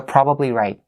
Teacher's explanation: Make the T stopped.